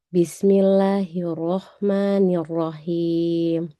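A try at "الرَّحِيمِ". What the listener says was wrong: Masih ha. Ha besar itu. Masih ha yang dari pangkal. Dia ini letaknya di tengah. Tengah tenggorokan. Kalau ha itu di pangkal. Jadi dinaikin sedikit. Bismillahirrahmanirrahim.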